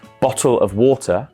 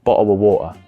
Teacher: The T's are much more harsher and you can hear them in every single word. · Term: standard British sound